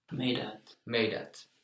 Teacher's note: Meitat. It would be meitat, but the first T softened.